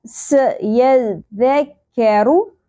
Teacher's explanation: सौद और सीन में यही डिफरेंस है कि सीन बारीक होता है